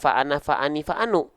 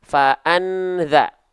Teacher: berarti nun sukun itu dibaca basicnya adalah an bunyinya bunyi konsonan n bunyi konsonan yang jelas